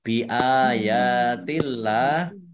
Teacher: Allahnya dibaca tipis karena harokat di depannya kasroh · mim sukun bertemu dengan huruf ba bacaan ikhfa safawi dibaca samar-samar